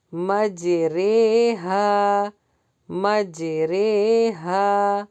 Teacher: اب یہاں پر ہمیں مجریہا نہیں پڑھنا، ابھی بتایا تھا نا آپ کو کہ امالہ میں کیا ہے، نہ یہ زیر کی آواز لگے نہ یہ زبر کی آواز لگے، یہ مجھول لگے